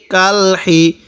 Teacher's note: এই হাটা উচ্চারণের সময় মুখ দিয়ে হালকা বাতাস বের করব আওয়াজ বের করবো না